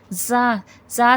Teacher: زا سختی سیٹی کے ساتھ پڑھا جائے گا۔